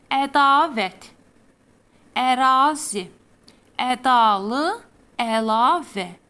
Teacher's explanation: Hər birində A hərfi uzun tələffüz edilir.